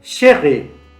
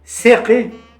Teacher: La consonante she, fricativa palatal sorda, opuesta a S, fricativa alveolar sorda.